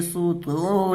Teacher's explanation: صدو یہاں پر واو مدہ ہوگا، واو ساکن سے پہلے دال کے اوپر پیش ہے تو اس کو ایک الف کے برابر کھینچ کر کے پڑھیں گے